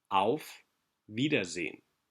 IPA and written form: aʊ̯f ˈviːdɐˌzeːən (Auf Wiedersehen)